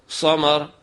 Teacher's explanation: اگر آواز بھاری ہو اور سیٹی کی آواز ہو، مثلا لفظ سمر ہے، اس کو اب جب ہم صاد سے پڑھنا چاہیں گے آواز کو بھاری کریں گے سیٹی کی آواز کے ساتھ